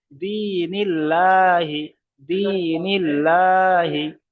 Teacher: নুন এসছে, আর নুন নিচে জের এসছে। তাহলে এখানে আল্লাহ শব্দটাকে বারিক করে পড়তে হবে, শুধুমাত্র জের আসলে বারিক করে পড়তে হবে।